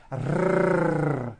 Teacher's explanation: Now, in some languages like Arabic and Spanish, the R is produced by bringing the tongue forward in the front of the mouth, behind the upper teeth, and rolling or trilling the tongue